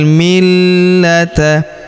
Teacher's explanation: Huruf la kita tahan dan kita tekan karena terdapat tanda tasydid di atasnya.